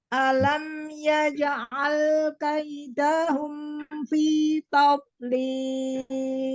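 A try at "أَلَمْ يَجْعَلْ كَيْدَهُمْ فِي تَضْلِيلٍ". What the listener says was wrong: Jangan kaidahum. Kalau dahum mimnya nggak ngalir. Kaidahum fi hum fi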